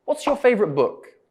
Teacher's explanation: The question starts with the word what, so it's a WH question. So our voice falls at the end. · they don't have a yes or no answer so our intonation goes down